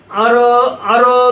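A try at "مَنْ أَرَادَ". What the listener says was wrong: মান আরো, আরো একটু এখানে একাধিক মাত্রা যেন আদায় হয়। মান আরো দা, মান আরো দা। মিম ধরছে নুন, মান। নুন সাকিনের পর হরফটা কি আলিফ। তো অ্যাকচুয়ালি হামজার মধ্যে ওই যে জবর দিলে আলিফের মতো উচ্চারণ হয়, সেই আলিফটা এখানে আছে, তো এখানে গুণা হবে না।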